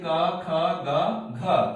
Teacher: तो अ, आ, क, ख, ग, घ और ह का उच्चारण स्थान कंठ है। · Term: कंठ वर्ण